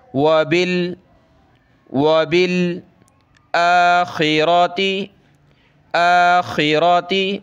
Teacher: یہ حمزہ کے اوپر کھڑا زبر ہے، ایک الف کی لمٹ میں اس کو اوپر کھینچیں گے